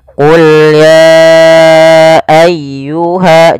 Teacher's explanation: Maka apabila ada kata ya ayyuha, biasanya kita sebut dengan bacaan mad jaiz munfasil yang kita panjangkan sepanjang 4 harokat